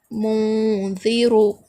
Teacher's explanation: یہاں پر نون ساکین کے بعد حروف اخفا میں سے تا آ رہا ہے، اس لیے یہاں پر اخفا کا قاعدہ ہوگا، یعنی آواز کو ناک میں چھپا کر پڑھیں گے